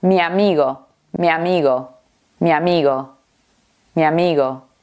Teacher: Juntamos la i con la a y no importa que estas vocales sean diferentes o de diferentes palabras.